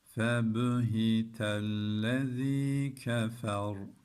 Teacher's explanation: yine ra'yı kalın okuduk kardeşlerim